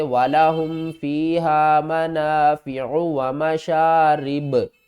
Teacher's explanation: ختم ہو جائے گی، با کے اوپر ہم جزم لگائیں گے، با حروف قلقلہ میں سے ہے تو اس کے اوپر قلقلہ کریں گے